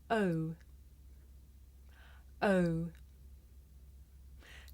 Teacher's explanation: this is a diphthong a double vowel sound the shape the mouth makes changes from the beginning of the sounds to the end